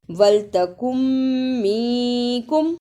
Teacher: نون ساکن کی آواز کو تھوڑی دیر ناک میں چھپا کر غنہ کرنا ہے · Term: اخفا